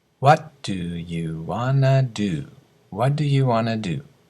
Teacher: Want to becomes wanna. Going to becomes gonna. Get becomes geta.